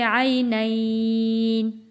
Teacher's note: 2 سے 3 حرکت کھینچ کر وقف کرنا ہوتا ہے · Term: حروف لین